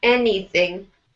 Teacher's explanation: put more emphasis, make any stronger, anything